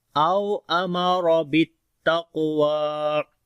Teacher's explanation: واو کو لمبا کریں گے، کھڑی زبر ہے یہاں پر، جب رکیں گے تب بھی وا ہی پڑھا جائے گا اور جب ملا کر پڑھیں گے تب بھی وا پڑھا جائے گا، ٹھیک ہے، یعنی یہاں پر کوئی چینجنگ نہیں ہوگی جب رکیں گے۔